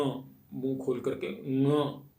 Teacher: उसको ग बोलना है लेकिन नासिका से बोलना है। ङ, मुंह खोल करके ङ, तो ये उच्चारण हम ठीक कर पाएंगे।